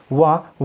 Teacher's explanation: वो बोला जाता है दंत प्लस ओष्ठ, दंत प्लस ओष्ठ। और दंत प्लस ओष्ठ तो उसको हम क्या बोलेंगे, दंतोष्ठ, दंतोष्ठय।